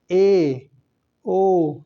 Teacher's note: संवृत की अपेक्षा थोड़ा अधिक मुंह खुलता है। यानी संवृत स्वर में सबसे कम मुख खुलेगा। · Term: अर्ध संवृत स्वर, अर्ध समृत स्वर